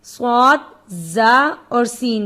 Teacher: زبان کا سرا ثنایا سفلا کے کنارے اور ثنایا علیہ کے ساتھ